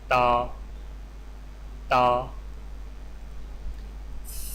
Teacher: تا، تا کی ادائیگی میں زبان کی نوک کو سامنے والے اوپر کے 2 دانتوں کی جڑ سے لگا کر باریک آواز میں پڑھیں، یعنی تا۔ آئیے مشق کیجیے۔